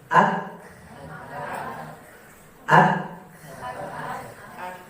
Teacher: Huruf yang ada syiddahnya itu berat. Kenapa? Karena dia tertahan suara kita. Kita udah keluarkan, kita tahan. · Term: huruf syiddah